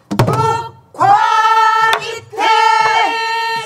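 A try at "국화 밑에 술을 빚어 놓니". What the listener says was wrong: 술을 아니 그렇게 길지 않아 국화 술을 5번 6번 박에서 나와야 돼 시작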